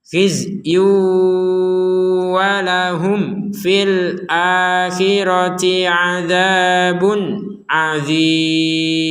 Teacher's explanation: Ada mim sukun bertemu fa, sukunnya tertulis, dibaca dengan jelas.